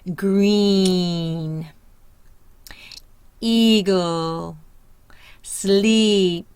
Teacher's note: You'll hear the E, long E, IY, IJ in Canadian phonetic symbols. Not pure, we're hearing a Y, so we're not just hearing the E, we're actually hearing the Y. The tongue is high in the front. The mouth is tight.